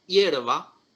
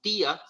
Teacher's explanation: en hierba se carga la voz sobre la vocal fuerte en tía se carga la voz sobre la vocal débil